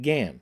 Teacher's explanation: she pronounced it gan with only a suspicion of a nasal sound